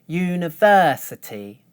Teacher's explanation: for the stressed third syllable, I hold one stable pitch